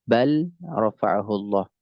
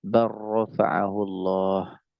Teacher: Ketika dia idgham kamil maka lamnya lebur ke huruf huruf ro. Barofaahullah.